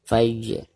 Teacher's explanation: Perhatikan huruf jim sukun sekaligus posisinya ada di tengah-tengah bacaan, maka dihukumi qalqalah sugro dan dibacanya harus dipantulkan dengan suara pantulan yang tipis. Fajr. Sekaligus huruf terakhirnya ketika diwakofkan maka harus dibaca sukun juga.